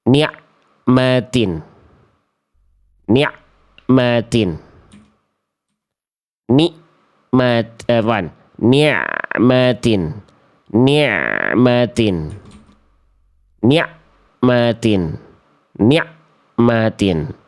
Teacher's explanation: sudah tepat melafalkan menjadi huruf ain, tapi dia masih baca dalam keadaan terputus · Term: ain sukun